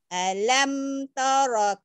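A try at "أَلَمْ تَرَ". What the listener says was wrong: taro, jangan toro. Jangan ketuker-tuker. Jangan alam toro. Yang O dibaca A dibaca O, jangan ketuker. Yang O yang ro-nya taro, jangan toro.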